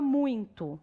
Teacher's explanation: Quando eu falo a palavra muito, eu tenho mais o som do U do que do I. Então, o U é vogal e o I é semivogal.